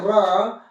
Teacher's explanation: लुंठित व्यंजन हम इसे इसलिए कहते हैं कि जब हम इसका उच्चारण करते हैं र, तो हमारी जीवा तालु से कई बार टच करती है, इसीलिए हम लुंठित कहते हैं। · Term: लुंठित या प्रकंपित व्यंजन